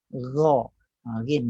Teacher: Bahagian pangkal lidah ni naik atas satu kali. Ditinggikan bahagian pangkal lidah, maka disebut ghin. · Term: isti'ala